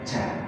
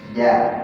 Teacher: Jadi jin posisi lidah bukan ujung lidahnya tapi wasat tengah lidah